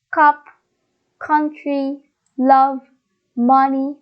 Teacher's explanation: Now, the second one, it is like an inverted letter V. It is the stressed schwa.